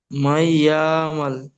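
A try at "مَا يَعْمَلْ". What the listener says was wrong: ইয়া টান দিচ্ছেন, মাইয়া মাল বলছেন, ইয়া মাল, ইয়া মাল হবে না, মাইয়া। মাইয়া। মাইয়া আমাল।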